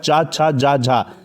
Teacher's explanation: चा वर्ग का जो उच्चारण स्थान होता है वो ताल होता है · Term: तालव्य